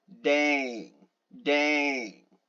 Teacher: dang very very rude and sarcastic you know unsympathetic dang and you can hear your voice lower when you go dang dang